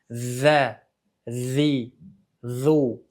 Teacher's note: Endi zal harfini sifatlariga eʼtibor beradigan bo'lsak, birinchisi jahr ya'ni jarangli tovush paychalarimiz, yaʼni tovish paychalarimiz bir-biriga yaqinlashadi. Havo kam chiqadi, lekin tovush baland bo'ladi va tovush paychalarimizda titrash hosil bo'ladi. Ikkinchi sifati rohava yaʼni sirg'aluvchi mahrajga sirg'algan holatda hosil boʻlishi kerak boʻladi.